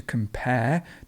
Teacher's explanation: to compare, the stress would be at the end, and comparison goes in the middle, a comparison.